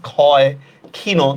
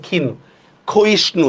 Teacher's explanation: শব্দের শুরুতে যখন আমরা উচ্চারণ করতেছি তখন সেটার উচ্চারণ হতেছে খর মতো।